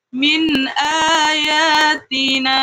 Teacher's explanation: Contoh pertama di sini ada nun sukun bertemu alif. Maka nun sukunnya dibaca jelas. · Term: izhar kholqi